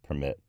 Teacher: the first e in permit becomes a schwa